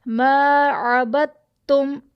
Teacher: عبدتم میں یہاں پہ 3 حروف ایسے ہیں کہ با ہمارا متحرک ہے، دال ساکن ہے، اور تا مشدد ہے، تو ہم اس میں با متحرک کو تا مشدد کے ساتھ ملا دیں گے اور دال ساکن کو چھوڑ دیں گے